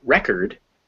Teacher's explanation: if we make it record the o becomes a schwa because out of the stress position